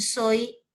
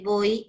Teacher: En soy tengo otro diptongo decreciente, porque primero está la abierta y luego la cerrada